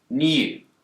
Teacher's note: In the word new, Brits will tend to pronounce a y sound here, new. But Americans don't. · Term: yod